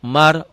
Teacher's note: Mar, ro-nya tebel. Kenapa ro tebel? Karena sebelum ro mati baris atas. Kalau ro-nya mati sebelum ro baris bawah tipis, ini tebel ya.